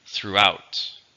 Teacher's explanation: two syllables stresses on the second